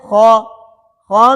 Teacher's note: موٹا حرف ہونے کی وجہ سے اس میں ہونٹ گول نہیں ہوں گے